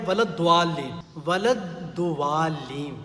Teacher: واو الف کا اضافہ ہوتا ہے بیچ میں، جو کہ غلط ہے